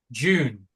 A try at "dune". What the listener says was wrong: Dune with a D.